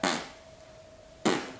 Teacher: by pursing your lips, making a bit of a fart sound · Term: raspberry farty sound